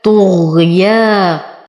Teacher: أصبر على الغين أعطيها الرخاء والاستفال